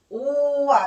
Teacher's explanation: 반몸 오와 아가 결합하니까 와를 천천히 발음한다고 생각하면 오와 이렇게 되는 거야. 오아 이렇게 되니까 입모양이 동그랗게 시작했는데 벌어져. 옆으로 입모양 바뀌어요. 입모양이 바뀌고 혀의 높이도 바뀌어요. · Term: 이중 모음